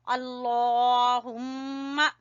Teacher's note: अल्लाहुम्मा लफ्ज अल्लाह को मोटा पढ़ेंगे और मीम के ऊपर गुन्ना करेंगे।